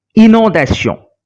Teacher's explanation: But as for inondation, the vowel O came immediately after the nasal combination IN. So we are not pronouncing the nasal sound in, but we are pronouncing the sound of N. Inondation and not inondation.